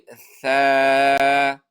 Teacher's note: ثا کې هم دوه خبرې وې، دا به د یو الف په مقدار راکاږو او د ژبې د سر لپاره مخامخ دوه غاښونو د سرونو ادا کېږي